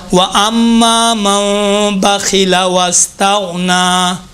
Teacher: 7 ہیں نا، ان میں سے ایک خا ہے، خا موٹا پڑھا جائے گا اس وقت جب خا کے اوپر زبر اور پیش ہو، خا کے نیچے زیر ہو تو باریک ہوگا۔